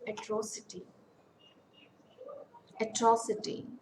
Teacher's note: we can see that the stress falls on the antepenultimate syllable · Take example, atrocity. Atrocity, it's a four-syllable word. Stress falls on the second syllable. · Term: anti-penultimate syllable